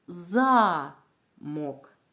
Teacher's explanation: у цьому слові перший склад вимовляється голосніше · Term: наголошеним складом